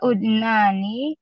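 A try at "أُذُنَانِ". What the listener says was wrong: Bukan ud. Bukan ud. Bukan ud, bukan.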